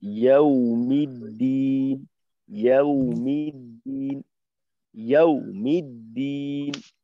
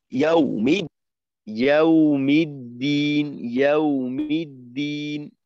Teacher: ওয়াওটা এখানে আওয়াজ নিম্নমুখী হবে না, অর্থাৎ ধাক্কা খাবে না